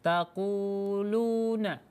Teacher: Tadi Ibu membaca lunya itu dibaca pendek, sebenarnya harus dibaca panjang karena dia juga matobi'i. Perhatikan di situ ada dhammah luna, ada baris dhammah yang bertemu dengan ya, bertemu dengan waw sukun, maka itu dibaca sepanjang dua harokat.